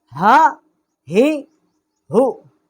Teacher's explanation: اقصائے حلق، جو حلق کا سینے کی طرف والا حصہ ہے، وہاں سے اس کا مخرج ہے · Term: حروف حلقی